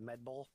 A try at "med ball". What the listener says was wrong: Well, you were saying med bowl. You said bowl.